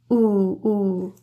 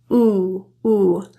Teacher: that tongue position is really high in the mouth and further back the jaw is apart